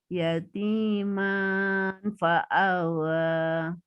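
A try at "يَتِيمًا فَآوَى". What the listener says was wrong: Oke, bagus ya.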